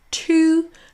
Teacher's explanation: Là, c'est le son t suivi d'un ou to. Et on allonge la syllabe ou. Vous le voyez ici dans la forme forte, on a le le u dans l'alphabet phonétique correspond à ou.